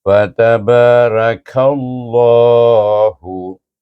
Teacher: Ba tu baca dengan mat asli. Kaf diidgamkan kepada nama Allah itu.